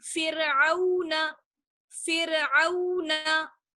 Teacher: रॉ साकिन है और उससे पहले फा पर जेर है, इसलिए रॉ को बारीक पढ़ेंगे